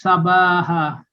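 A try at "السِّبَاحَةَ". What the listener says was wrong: Nah, itu kasrahnya di bawah tasdid. harusnya di bawah sin seharusnya.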